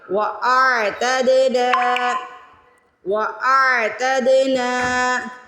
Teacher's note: وَأَعْتَد، دال پہ قلقلہ کریں گے، وَأَعْتَدْنَا وَأَعْتَدْنَا، نون پہ زبر کے بعد الف آ رہی ہے، نون کو کھینچ کے ادا کریں گے